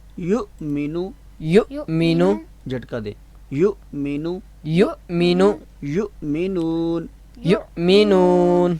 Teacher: حمزہ کو حمزہ کی آواز سے نکالنا ہے، یعنی کہ آپ عین کی آواز سے نہ نکالیں، حمزہ کی آواز سے جو اقصا حلق سے نکلتی ہے. یؤمنو، یؤمن، جھٹکا دے.